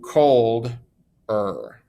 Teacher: there's not as much stress on that er so it has that extra unstressed syllable